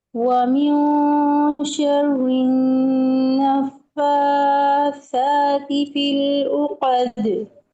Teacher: آپ نے یہاں پہ غنہ بھی کیا، فا کو بھی لمبا کیا، سا کو بھی لمبا کیا، اخفا کو بھی ٹائم دیا